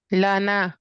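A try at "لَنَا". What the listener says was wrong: لانا تھوڑا سا لمبا. اب دیکھیں یہاں الف ہے نا ساتھ، یہاں ہم لمبا کریں گے. لانا. اب یہ زبر اور الف مدہ سے ہم نے فرق دیں.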